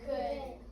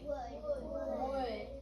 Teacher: You don't voice your L in the word would or could. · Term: silent L